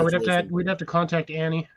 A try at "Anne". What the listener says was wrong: It's Anne. The E is silent.